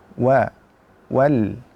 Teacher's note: Wa yang mana makhrajnya berada pada asyafatain atau pada kedua bibir. Jadi untuk mengucapkan huruf tersebut dengan sempurna, kita harus terlebih dahulu memonyongkan mulut kita.